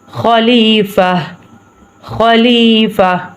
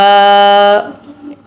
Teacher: اس لیے کہ ادھر ہو گیا ہے وقف، تو اس لیے ہم ادھر رکیں گے، وقف کریں گے، تو اس لیے ہم تا کو ہا کی آواز نکالیں گے، کیونکہ یہ جہاں وقف آ جائے تو وہاں پہ تا کی آواز نہیں ہا کی آواز نکالیں گے